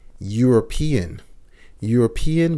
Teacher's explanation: European begins with a vowel, E, but the sound is a Y sound, Y, a European.